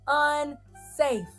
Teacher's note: that a now makes the long vowel sound say in its name